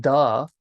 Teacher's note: you're going to launch off those teeth the top teeth those your top two middle teeth as opposed to the roof of your mouth